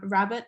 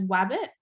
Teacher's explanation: substituting R for W, so they'll say rabbit as wabbit